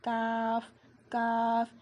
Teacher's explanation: کاف کو ہم باریک پڑھیں گے اور ہمارے ہونٹ جو ہے نا اسے اسپریڈ ہو جائیں گے